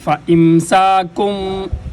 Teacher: فَإِمْسَاكُمْ، کاف باریک، فَإِمْسَاكُمْ، باریک کاف کو ادا کرنے کے لیے اوپر والے تالو کے سختی سے پر جب اپنی زبان کو لگائیں گے تو یہ باریک کاف ادا ہوگی۔